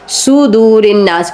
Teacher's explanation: یہاں پر نون پر غنہ ہوگا اس لیے ہم نے صدور الناس کہا ہے